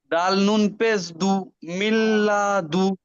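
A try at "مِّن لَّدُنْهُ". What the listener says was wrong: দু কেন, দাল পেশ দু হয়, আর দাল নুন পেশ দুই একই হবে কি, দুন হবে। দাল পেশ দু, দুন হাফেজ হু।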